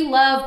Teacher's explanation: did you hear that extended vowel duration for emphasis